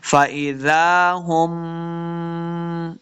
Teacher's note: मीम शदद है, गुन्ना करेंगे